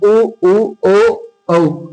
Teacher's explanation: वे स्वर जिनके उच्चारण में ओष्ठ गोल हो जाते हैं या वृत्त जैसी आकृति ग्रहण कर लेते हैं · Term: वर्तुलाकार